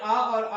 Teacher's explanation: आ और आ जब हम बोलेंगे तो वो कंठ के द्वारा उच्चारित होता है।